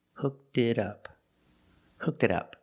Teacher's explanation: The T in it sounds like a fast D.